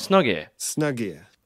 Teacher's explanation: snug okay so you can link The Snug and the here you can actually drop the H in here